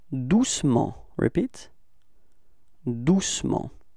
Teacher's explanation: We don't really pronounce the E between C and M